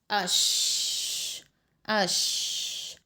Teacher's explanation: اس کی ادائی میں زبان پھسلتی ہے اور سانس منہ میں پھیلتا ہے، یعنی جو ہماری ہوا ہے وہ منہ میں پھیلتی ہے، منہ میں رہتی ہے۔ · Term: متفشیہ